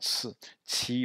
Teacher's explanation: le q se prononce comme un ts expiré